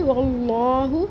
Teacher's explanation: وَمَكَرَ اللَّهُ، اس کے بعد واللہ، واو کا زبر لام اسم جلالہ سے ملا کے پڑھیں گے، اللہ کا نام پر پڑھیں گے اور ہا کی پیش کو چھوٹا پڑھیں گے۔ واللہ، اور لام اسم جلالہ کے اوپر کھڑا زبر ہے، ایک الف برابر پڑھیں گے